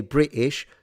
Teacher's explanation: In England, usually you don't. If you really don't feel like pronouncing the T, what you end up doing is using a glottal stop and you just eat it out.